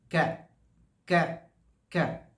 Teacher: ज़बान का जो पिछला हिस्सा है, उससे थोड़ा सा आगे जाएंगे तो वहाँ से काफ की आवाज़ आएगी। क क क। ये ज़बान की जो ज़बान है वो ज़बान को ऊपर तालू की तरफ, रूफ ऑफ द माउथ को लगाना है, तो उससे आवाज़ आएगी कैफ कैफ।